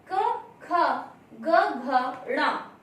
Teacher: जब इन 5 वर्णों का हम उच्चारण करते हैं तो हमारी जो वायु है वह कंठ से होकर के बाहर आती है